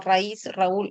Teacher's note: Basta que tú percibas una secuencia de vocal abierta con vocal cerrada y que la cerrada esté siendo acentuada para que le marques la tilde. · Tienes una vocal cerrada o una vocal abierta, ¿cierto? Pero lo característico del hiato acentual es que la vocal cerrada es la que lleva el acento